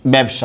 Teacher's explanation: আমরা জানি স গুলো উচ্চারণের সময় তালব্য স হয়ে যায়